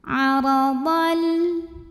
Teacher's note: Huruf ra dibunyikan secara tafkhim karena ra berbaris fathah. Cara membacanya ditebalkan.